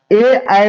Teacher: कंठ और तालव्य से मिलाकर ए आय बोला जाता है